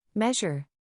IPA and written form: ˈmeʒ.ər (Measure)